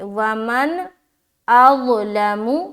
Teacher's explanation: نون کی آواز ظاہر کرنے میں ہمیں دیر نہیں لگانی اور ناک میں بھی آواز نہیں لے جانا